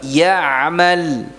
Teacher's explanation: Adapun sampai pada ya-nya, ya'mal, ya-nya tidak ada dengungnya. Karena memang sejatinya ya bukan huruf gunnah. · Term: tanpa dengung